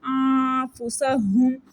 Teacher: سین وصل سٹی والا لیٹر ہے اس کو سٹی سے پڑھیں گے